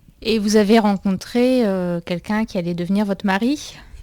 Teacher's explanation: you hear a little bit of a pop after the R